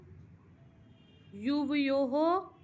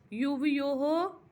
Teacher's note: विसर्ग का जैसा कि मैंने कहा है ह के रूप में उच्चारण करते हैं